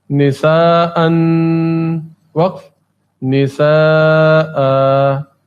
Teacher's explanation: دو زبر وقف کی صورت میں ایک الف کے برابر کھینچ کر ادا ہوتے ہیں